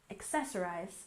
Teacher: accessorize we stress the second syllable